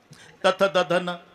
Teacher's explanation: जेव्हा संबंध जिभेचा दाताशी ते दंते आहे